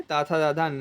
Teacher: तय वर्ग में ताथा दाधा न आता जिसे हम दंत कहते हैं